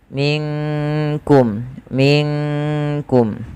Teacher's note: maka di situ nunnya disamarkan langsung kepada huruf Kaf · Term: Ikhfa ab'ad